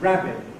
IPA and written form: ˈræbɪʔ (rabbit)